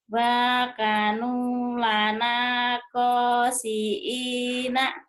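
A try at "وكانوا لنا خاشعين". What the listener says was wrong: bukan. kelihatan kosiin, bukan kosiin, bu kho. Kosiin. panjang. kalau gitu kaknya panjang, Bu. Wakanu. Bukan kosiin, Bu. Baju koko, Bu. Bukan baju koko.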